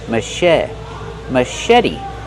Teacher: Put the stress on the second syllable and make the vowel e like red in bed.